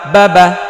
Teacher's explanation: হরকতের উচ্চারণ তাড়াতাড়ি পড়িতে হয়, এখানে টান হবে না।